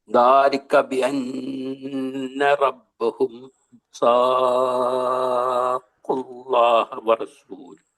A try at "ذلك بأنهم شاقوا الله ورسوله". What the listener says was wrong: റബ്ബഹു ഇല്ല അവിടെ. അല്ല, റബ്ബഹു എന്ന വാക്കില്ല എന്ന് പറയാം.